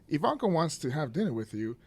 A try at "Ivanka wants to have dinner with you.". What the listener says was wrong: But you're reading like you're reading to kids. No, just read like an adult. Read like an adult. Yeah, but you get really lighthearted.